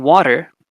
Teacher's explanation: water is a simple tap